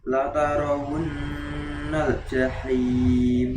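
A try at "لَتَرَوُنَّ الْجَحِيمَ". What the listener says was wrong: Hamasnya belum keluar nih. Ya, jadi di sini tadi bacaan Mas Rahim hanya kurang di hamas saja di sifat. Berarti sifat huruf kaf dan huruf ta hamasnya harus dimunculkan.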